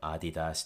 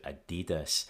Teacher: The main difference here, of course, is the stress moving from the first syllable to the second, from Adidas to Adidas.